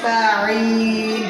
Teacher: সিন উচ্চারণ করার সময় চড়ুই পাখি বা বাঁশির ন্যায় একটা আওয়াজ হবে।